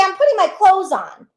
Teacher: many times we don't really pronounce the th in that word clothes we don't say clothes we say I'm putting my clothes on